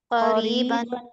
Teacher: با پہ تنوین ہے، اس کے بعد حرف ہلکی نہیں ہے تو اس وجہ سے تنوین پہ غنہ کیا جائے گا